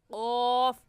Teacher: ज़बान का आखिरी हिस्सा जो कव्वे के पास है, तालू यानी हलक जो हमारा ऊपर है उसमें उस आखिरी हिस्से को लगाएंगे तो क्या निकलेगा क़ौफ।